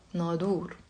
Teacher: it comes from the same root, nun, dha, and ra, but in Lebanese, we pronounce it as a da